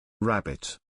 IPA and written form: ˈræb.ɪt (Rabbit)